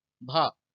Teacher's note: हिंदी की स्पर्श घोष महाप्राण ओष्ठ ध्वनि व्यंजन है